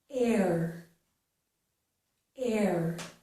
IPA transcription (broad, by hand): ɛɹ